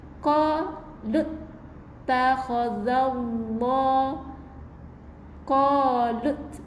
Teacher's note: Kena qalut masuk dalam huruf ta terus bukan qalu takhaza